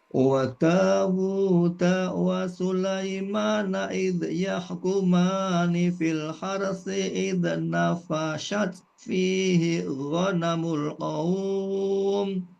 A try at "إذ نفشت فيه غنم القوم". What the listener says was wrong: Diulang, diperbaiki pengucapan huruf zal yang sukun ya. Jangan sampai dipantulkan. Idz enggak boleh. Idz nafasat, fa-nya pendek.